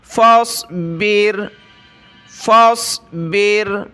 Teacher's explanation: یہ مثال ہے اس چیز کی کہ را کے اوپر سکون جزم ہے تو اس سے پہلے والے حرف پر زیر ہے تو اس کو باریک کر کے پڑھنا ہوگا. فا کو صاد کے ساتھ ملائیں گے.